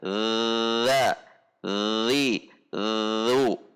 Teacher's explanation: Tidak menekan secara sangat kuat seperti huruf yang memiliki sifat jahar dan syiddah. Tetapi ini hurufnya sifatnya jahar dan rakhawah.